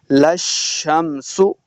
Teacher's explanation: لام کو شین کے سامنے لانا ہے، شین مشدد ہے